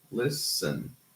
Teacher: Listen has a silent T, so it's a case of elision